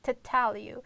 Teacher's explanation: It's like you will pronounce only t sound and a schwa automatically comes together.